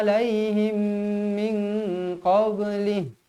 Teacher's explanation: mim bertemu mim, wajib dibaca dengung dengan kadar 2 harakat. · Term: Idgham mithlain shaghir